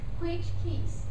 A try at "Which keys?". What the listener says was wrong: So she's saying which keys? No, this is wrong in English. Why? Because keys is new information. And in the second sentence, it's already old information.